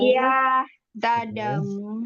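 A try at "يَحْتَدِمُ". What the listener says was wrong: Yahtadi. Yahtadimu. Harus ke bawah.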